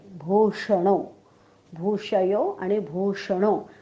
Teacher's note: षटकोनातला श म्हणताना जीभ उलटी टाळ्याकडे जाते पण टाळ्याला चिकटत नाही